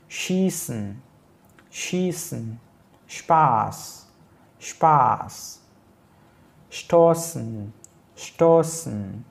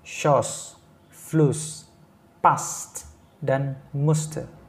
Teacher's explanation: di mana yang menggunakan SZ ini ya vokalnya panjang, sedangkan yang menggunakan double S atau double S ini vokalnya pendek